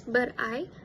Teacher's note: the t in the word but was dropped, so it sounded like but I instead of but I.